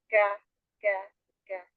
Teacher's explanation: Kalau langit-langit lembek kan kafnya. Kalau kafnya itu antara langit keras dan lembek. Dan ingat ada sifat hambus, jadi ada sedikit ke depan ya.